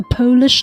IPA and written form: ˈpoʊlɪʃ (Polish)